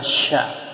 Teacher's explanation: Yang kotornya, versi kotornya adalah sya. Sya itu dia tidak mendesis tapi gemuruh. Seperti kita menghalau ayam.